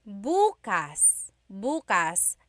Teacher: emphasis is on the first syllable that means tomorrow